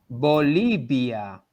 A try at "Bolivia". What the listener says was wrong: It's on the O. Say the O differently. I'd say Bolivia.